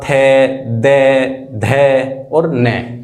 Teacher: हमारी जो जीभ है वो दांतों से लगेगी।